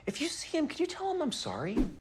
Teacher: so what happens here is H in him is dropped so what you hear is see him if you see him